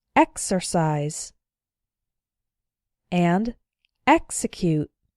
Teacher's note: However, it's the first syllable that's the strong one, not the syllable immediately after the X. Here are a couple more words where the X is followed by a vowel, but the strong syllable is not immediately after the X, so the X is pronounced ks.